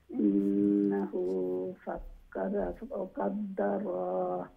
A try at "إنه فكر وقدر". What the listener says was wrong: আবার ইন্নাহু ফাক্কারা ওয়া কাদ্দার, রা হইয়া স্টপ করতাম না, সাকিন করিয়া।